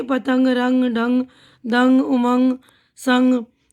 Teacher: हल्की सी नाक से आवाज़ आ रही है ना, तो इसलिए नून की आवाज़ नहीं आ रही बल्कि नून गुन्ना की आवाज़ आ रही।